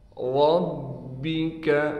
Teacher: با پر تشدید ہونے کی وجہ سے ٹھہراؤ کریں گے اور را کو موٹا کر کے پڑھیں گے۔